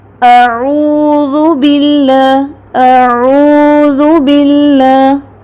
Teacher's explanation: حمزہ اور عین، حمزہ سخت، عین سافٹ